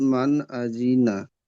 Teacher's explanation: >> তাহলে এখানে নুন সাকিনের পরে হরুফে হালকি ছয়টি অক্ষর মত থেকে হামজা এসছে। তাই নুন সাকিনকে বিনা গুন্নায় জাহির করে পড়তে হবে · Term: ইজহার